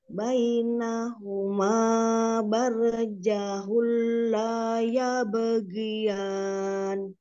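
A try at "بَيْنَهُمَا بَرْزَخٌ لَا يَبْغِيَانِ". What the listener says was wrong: Tinggal tobi'inya, jangan kepanjangan. Tapi yang ini kecepatan. Yang la tuh bagus.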